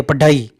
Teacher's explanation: तो पढ़ाई जो हमने बोली है, पढ़ाई, तो यहाँ पे जो ढ को बोलते हैं ना, देखो ढ, जीभ ऊपर जाके तुरंत वापस नीचे की ओर आती है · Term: उत्क्षिप्त ध्वनि